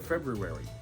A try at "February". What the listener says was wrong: Yeah, well, you have to pronounce all the R's. It's February. It's not an R there. pronounce it.